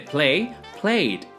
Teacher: Se pronuncia como una D cuando el verbo termina en un sonido sonoro con vibración en las cuerdas vocales. Por ejemplo, de play, played.